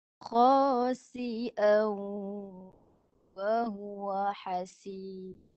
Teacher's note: Ghunnah ni mudghamah ni hidung sebahagian, mulut sebahagian.